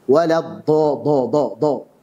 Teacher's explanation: Cuman huruf dal tapi ditebalkan.